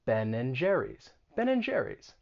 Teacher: because you see that sign for and ben and jerry's but nobody's going to pronounce and they're going to reduce it and just say n